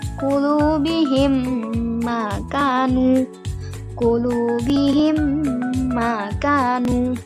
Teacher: di situ juga ada dengung dan peleburan di antara mim sukun dan mim selanjutnya